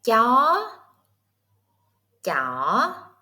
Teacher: Sắc is fast. Hỏi is low. Sắc is straight. Hỏi is curved.